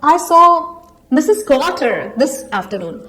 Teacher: the rising intonation makes it sound like a question. It asks whether I was the person who actually saw Mrs.